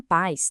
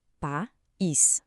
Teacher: Em paz, temos um ditongo. Os sons ficam juntos numa sílaba só. Mas, em país, a gente separa. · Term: hiato